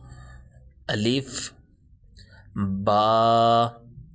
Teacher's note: اب با حروف شفوی میں سے ہے، ہونٹوں سے ادا ہو رہا ہے۔